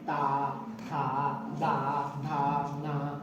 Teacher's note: ये दंतक है, जीभ दांत को टच करेगी